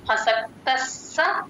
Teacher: యోగం అసక్తస్స విశిష్యతే అసక్తస్స అసక్త కి స ని యాడ్ చేసుకొని చెప్పాలి స కింద స ఒత్తు క్లియర్ గా వినపడాలంటే ముందు అక్షరాన్ని కలుపుకొని చెప్పాలి